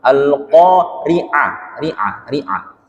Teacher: Bukan mal-qari'ah Pak ya. Al-qari'ah. A-nya perjelas, huruf ainnya diperjelas.